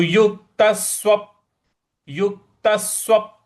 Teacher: तो युक्तस, उसके बाद स्व, तो व पे हम जो व के आगे प है उस पे हमको हल्का सा बल लगाना है, आघात देना है